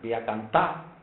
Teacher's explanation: sin la R del infinitivo, el infinitivo todas las R desaparecen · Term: caída de las consonantes finales